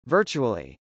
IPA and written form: vˈɝtʃuəli (virtually)